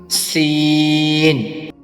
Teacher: سین کو ادا کرنے کے لیے بھی زبان کے سرے اور سامنے کے نیچے والے 2 دانتوں کے کنارے اور کچھ حصہ اوپر کے آگے والے 2 دانتوں کے ساتھ لگائیں گے۔ سین کو ادا کرنے کے لیے ہلکی سی سیٹی کی سی آواز پیدا کریں گے